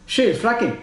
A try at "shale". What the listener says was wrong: I know. It sounded like shell oil.